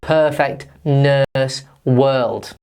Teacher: It's actually the long version of the schwa sound. So if we say the schwa sound again, if we make a long noise, that is the disgusting sound, and we find that in words like perfect, nurse, world.